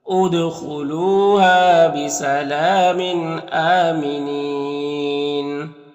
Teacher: उद दाल में कलकला होगा · यहाँ पर लाम में खड़ा ज़बर जो अलिफ मद्दा की तरह होता है। यहाँ पर तनवीन के बाद हमज़ा है, हुरूफ हल्की में से, तो तनवीन में इज़हार हकीकी होगा